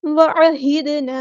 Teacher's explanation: عین کو مستحل لیکن مڈل تھروٹ سے ادا کریں گے ، ہاں سمپل پڑھیں گے، اور دال ساکن پہ کلکلا ہوگا،